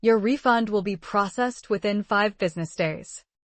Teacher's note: The stressed words are refund, processed, five, business days.